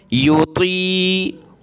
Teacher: وعلی الذین یطیقونہ, طا اور قاف کو موٹا کریں گے. یطیقونہ, ہا الٹا پیش ہو, نہ ہو.